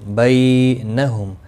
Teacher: میم ساکن کے بعد متحرک با آیا ہے، اخفا شفوی ہوگا، گنہ کے ساتھ پڑھیں گے